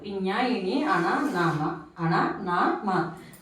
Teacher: మనం ముక్కుని అనుసరించి కానీ ఈ అక్షరాలను పలకలేం కాబట్టి అనునాసికాలు. ముక్కు సహాయంతో పలుకుతాం కాబట్టి అనునాసికాలు అంటారు.